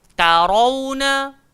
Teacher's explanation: Ta jangan ikut gemuk. Ta tetap ta. Dia tak akan to.